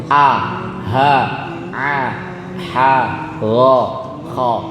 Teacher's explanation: Kalau kita perhatikan ke 6 huruf ini tempatnya tenggorokan semuanya. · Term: Halqi